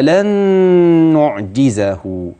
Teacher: طيب هوصل لن باللي بعديها تبقى لن نعجزه، يبقى لما اوصل نون لن بنون نعجزه هيبقى في عندي هنا ادغام، خلي بالي بقى من الغنة بتاعته لانها في اتم مراحلها